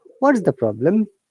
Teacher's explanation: let's move on to the next explanation okay notice that intonation intonation falls at the end of the question